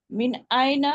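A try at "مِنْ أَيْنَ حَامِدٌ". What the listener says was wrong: মাদগুলো কিন্তু ছেড়ে দিচ্ছে। মিন আইনা হামিদুন,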